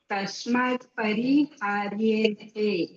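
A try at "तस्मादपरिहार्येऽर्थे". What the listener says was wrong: તસ્માત, તસ્માત દકાર અડધો નથી બોલવાનો. તસ્માદ પરિહાર્યેર્થે. હાર્યેર્થે. હાર્યેર, યેર, યેર. હાર્યેર.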